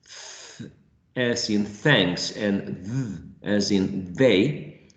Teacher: the tip of the tongue being inserted in the teeth, that is leaving this small or narrow room for the airflow to leave.